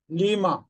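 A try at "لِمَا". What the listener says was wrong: Good.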